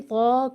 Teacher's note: طا کو ایک تو کھینچ کر پڑھنا ہے اسٹینڈنگ زبر یا کھڑا زبر ہونے کی وجہ سے